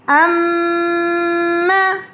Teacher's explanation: مشدد میم کو ہم سختی اور جماؤں کے ساتھ غنہ کر کے ادائیگی کریں گے اس کی۔